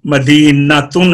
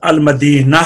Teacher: पहले नंबर पे हाय तानीस जो वाहिद मुअन्नस के आखिर में होती है। हालत वक्फ में ये ता हाय साकना से बदल जाती है